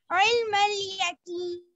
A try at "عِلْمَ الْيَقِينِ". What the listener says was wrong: قف বড় কফ পড়তে হবে ইয়াকিন না ইয়াকিন